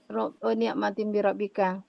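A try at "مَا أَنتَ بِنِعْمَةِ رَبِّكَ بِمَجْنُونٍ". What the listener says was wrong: Ini ti ya, bukan tin. Bi, kemudian majnun.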